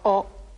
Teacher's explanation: the final Japanese vowel o is also sharp and short in duration